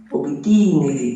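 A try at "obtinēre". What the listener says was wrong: No, è ottenere, era longo.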